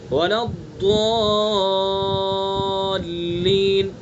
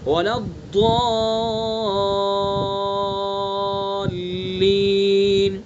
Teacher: تو ولضالین کو ہم جب کھینچیں گے کم از کم 3 الف کھینچیں گے، ولا الضالین، 3 الف کم سے کم، اور زیادہ سے زیادہ 5 الف، ولا الضالین. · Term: مد لازم کلمی مثقل